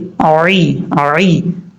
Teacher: اب یہاں پر ایک تو آپ نے عین کو اپنے مخرج سے ادا کرنا ہے، اور عین جو ہے اس حلق سے ادا ہوتا ہے جس حلق کا تعلق گلے سے ہے